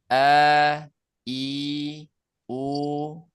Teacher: yang keluar dari aljauf itu bukan hamzahnya tapi bunyi panjangnya ya. A I U misalkan kalau ada kalau kebetulan ini huruf Hamzah jadi A I U. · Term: huruf mad